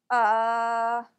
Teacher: it's a soft relaxed sound the kind of sound someone might make if they don't know what the answer to a question is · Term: schwa sound